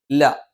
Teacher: നാവിന്റെ അറ്റം മേലെ മുൻപല്ലിന്റെ മോണയിലാണ്